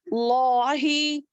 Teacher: اب لفظ جلالہ کے دونوں لام کو موٹا پڑھیں گے